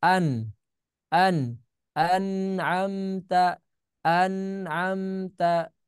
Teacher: Ketika ada nun sukun, nah ini nun sukun bertemu huruf ain ya. Maka dibaca jelas ya. Nunnya dibaca jelas. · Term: izhar